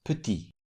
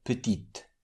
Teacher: What makes the final consonant pronounced is the vowel E added at the end. So the masculine form is petit with silent T at the end, and the feminine form is petite with pronounced T.